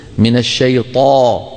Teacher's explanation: لما تقول بتلاقي الصوت عم ينتشر في الفم. من الشيطان الطاء مفخمة، لابد فيها من تفخيم الطاء وعدم همسها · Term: طاء مجهورة